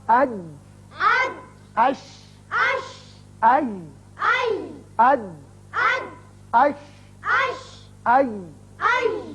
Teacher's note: زبان کا درمیانی حصہ جب سامنے والے تالو کے درمیانی حصے سے لگتا ہے چپکتا ہے تو یہ تینوں حروف ادا کیے جاتے ہیں